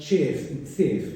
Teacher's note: instead of kef, we have words like chef and sef in some dialects